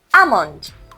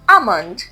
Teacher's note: The L is silent for many speakers.